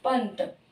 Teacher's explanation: और ये हमें अगर ये ना भी पता हो तो इसके अनुसार अपने आप ही इसका उच्चारण स्थान पता चल जाता है कि त वर्ग अगर दंते है तो इसका उच्चारण स्थान भी न ही होगा, पंत इसको बोलेंगे तो पंत। त दांतों के पीछे से आ रही आवाज, तो इसके अनुस्वार की आवाज भी दांतों के पीछे से ही आएगी